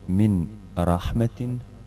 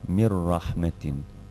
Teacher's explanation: Pa tako ovdje na prvom primjeru čitamo umjesto min rahmetin odvojeno, pojačavamo harf ra sa teštidom, a harf nun sa sukunom uopšte ne izgovaramo iako piše, pa onda čitamo kao da je napisano mir rahmetin. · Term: pravilo uklapanja bez izgovora